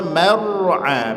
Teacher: mara mim tipis, ro tebal. Jangan dibaca mar jadi mo tidak perhatikan tebal tipis.